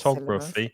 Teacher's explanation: And we're stressing the second syllable